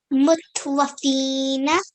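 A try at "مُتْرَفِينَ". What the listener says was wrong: Mutra. It's a ra. Mutrafina.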